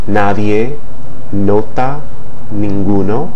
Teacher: pronounced with contact between the front portion of the tongue and the ridge between the top teeth or behind the top teeth